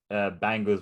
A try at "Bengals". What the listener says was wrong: Is it B-A-N, is it? B-E-N, not B-A-N. B-E-N-G, not B-A-N-G.